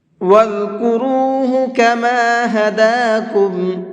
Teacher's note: وَاذْكُرُوا کے را کو بھی منہ بھر کے پڑھیں گے